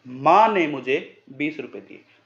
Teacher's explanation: अगर आपने इस प्रकार से बोला माँ ने मुझे 20 रुपये दिए, माँ ने यानी कि माँ ने दिए मुझे, पिताजी ने नहीं दिए। माँ के ऊपर विशेष फोकस है तो माँ पे ही ये बलाघात होगा।